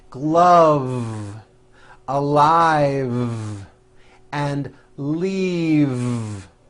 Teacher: this last word leave is very different from the word Leaf like from a tree which has an unvoiced F the word is leave with a voic V keep